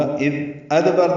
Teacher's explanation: دال نرمی سے پڑھیں گے، اس پہ اظہار ہوگا، اذ ادبر دال ساکن پہ قلقلہ ہے